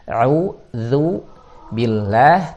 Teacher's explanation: Yang pertama tadi a'udzu billah, tipis lahnya.